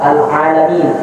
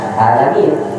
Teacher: harus diucap dengan ain yang begitu jelas, tidak boleh sama dengan hamzah